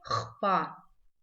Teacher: Звук «х» здесь читается тверже, чем в русском языке.